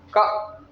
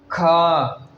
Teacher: जैसे ही हम पहला वर्ड बोलते हैं यानी क बोलते हैं तो इसमें कम वायु निकलती है जैसे ही ख का उच्चारण करते हैं तो इसमें क से अधिक वायु महसूस होती है